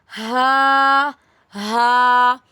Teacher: हल्क के दरमियान वाले हिस्से से हा अदा होता है। हा is a soft letter pronounce gently from the throat.